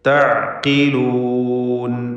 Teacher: ഖാഫിന് കസ്റുണ്ട്. ഏറ്റവും കുറഞ്ഞ ലെവലിലുള്ള തഫ്ഖീമാണ് അതിന് കൊടുക്കേണ്ടത്.